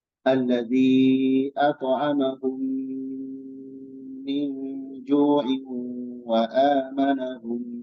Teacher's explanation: mim sukun bertemu apa mim maka dibacanya idgam melebur dan disertai dengan dengung yang ditahan